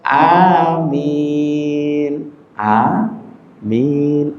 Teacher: A panjang, min panjang, mimnya tanpa ditasydid.